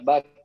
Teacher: Kaf itu harus keluar aliran udaranya apalagi ketika sukun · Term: huruf kaf